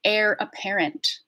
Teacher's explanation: air is one of these words that we have from French like honor honest and hour where we don't actually say the H